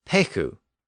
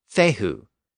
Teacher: the P sound became an F sound and the k sound became an H sound